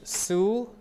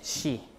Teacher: This is su, so it's S, but when it's in front of a front vowel, it's she · your consonant especially the s and the z becomes more palatalized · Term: palatalization